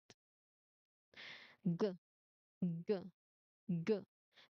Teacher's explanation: So the back part of your you know tongue it blocks the air uh at the soft roof on your mouth. So air is stopped then released immediately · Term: voiced partner